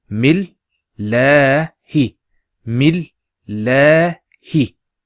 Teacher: The alif is there, and you got a shadda here. So we pronounce it as mil, and then that la stretching sound is due to the hovering alif, and the hi, mil la hi.